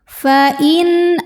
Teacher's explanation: Nun sukunnya dibaca dengan izhar atau jelas bunyi n-nya